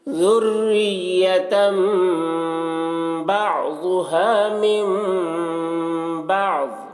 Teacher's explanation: تنوین کو میم سے بدل کر غنہ اخفا کے ساتھ میں پڑھیں گے۔ · ذال کو باریک پڑھیں گے، یہاں پر تشدید مع تشدید ایک کو دوسرے سے ملا کر پڑھیں گے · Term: انقلاب